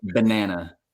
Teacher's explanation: So the first syllable is definitely a schwa, like ba. Yeah. Second syllable stress, banana, and then back to a schwa again, like banana.